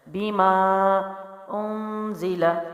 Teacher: آگے زا ہے تو یہاں پر اخفا کا غنہ ہوگا، یعنی نرم غنہ۔